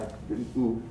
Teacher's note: So this is a high back tense vowel.